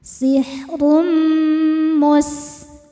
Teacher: Karena tanwin dhammah menghadapi huruf mim, maka tanwin ini dimasukkan ke mim sihrum sambil tahan didengungkan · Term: idgham bidunah